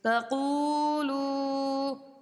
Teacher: یہاں پر الف مدہ ہے، اس کو اس لیے ایک الف کی مقدار کھینچیں گے، اور واو ساکن پیش ہے، وہ مدہ ہے دونوں جگہ، اس لیے تقولوا اتنی مقدار میں ہم قو کو بھی کھینچیں گے اور لو کو بھی کھینچیں گے